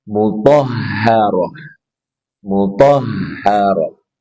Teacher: Ra, dia ha dari pangkal tenggorokan ra. Ini tak marbutah karena di akhir ayat maka dia berubah menjadi ha.